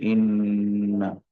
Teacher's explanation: نون مشدد کو دو حرکات کے برابر غنہ کر کے پڑھیں گے، یعنی ایک الف کے برابر